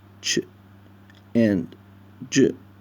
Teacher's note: a speech sound made up of a plosive stop followed immediately by a fricative